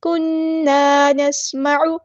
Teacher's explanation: سین کی سیٹی ہم نے واضح کرنی ہے ، عین کو وسطی حلق یعنی مڈل تھروٹ سے ادا کرنا · نون پہ غنہ زمانی ہو رہا ہے، ایک الف کے برابر رکیں گے